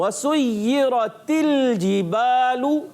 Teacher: جیم کی ادائیگی کلیئر رکھنی ہے، چے جیسی نہیں ہو جانی چاہیے · تا کی زیر کو لام سے ملاتے ہیں اور لام کو ہلانا نہیں ہوتا۔ بعض بچے بڑے پڑھتے ہیں وَسُيِّرَتِ، تل کر دیتے ہیں، تل کی آواز نہیں آنی چاہیے۔